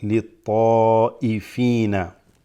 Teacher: you pause your breath and then you start more in the deeper part of the throat